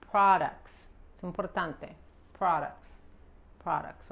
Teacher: Cuidado con la R y la O se pronuncia como una A